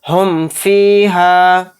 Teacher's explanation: اظہار شفوی کا مطلب ہے کہ ظاہر کر کے اس حرف کو پڑھنا، یعنی اس میں غنہ نہیں ہوگا بالکل بھی، اس کو ہم بالکل ظاہر کر کے پڑھیں گے، ناک میں آواز کو نہیں روکیں گے۔ یعنی میم ساکن کے بعد یہاں پر فا آ رہا ہے تو اس میم کو ہم ظاہر کریں گے، اس میں غنہ بالکل نہیں کریں گے